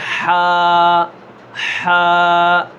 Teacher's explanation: حلقہ درمیان والا حصہ، اس سے کیا نکلتا ہے؟ ہا نکلتا ہے